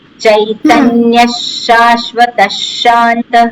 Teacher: વિસર્ગનો અડધો શકાર થઈ જાય.